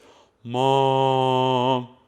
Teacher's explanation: I'm using a lot of air, the sound's not very good, and it's not that loud. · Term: back placement